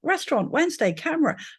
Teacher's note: there are lots of words where we collapse syllables like restaurant Wednesday camera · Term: syllable elision